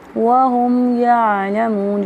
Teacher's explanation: واو مدہ ایک الف کے برابر لمبا کریں گے